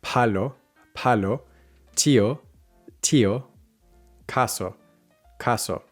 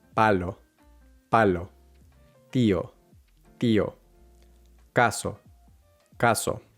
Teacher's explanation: If you notice a burst of air coming out, you are probably saying them with an English or an American accent.